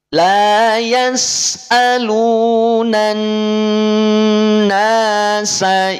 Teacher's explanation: Kaidahnya alif lamnya tidak dimunculkan. Langsung dimasukkan pada huruf nun. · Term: alif lam syamsiyah